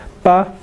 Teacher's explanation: en caso de Corea también cuando usted pronuncia pa que nunca ocurre aspiración